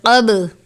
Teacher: قلقلہ کے حروف کو خوب ظاہر کر کے پڑھنا چاہیے، یعنی قاف با زبر قب، اس طرح سے آواز کو روک دینا چاہیے